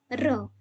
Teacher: जिन व्यंजनों के उच्चारण में जीवा को 2-3 बार कंपन करना पड़ता है, वे प्रकंपित कहलाते हैं। जैसे र, ठीक है, 2-3 बार जब कंपन पैदा हो तो जैसे र हम बोलते हैं तो कंपन पैदा होते, इसीलिए इसे प्रकंपित कहा जाता है।